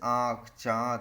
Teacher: जिन स्वरों के उच्चारण में हवा नाक और मुंह दोनों से निकलते अनुनासिक कहा जाता है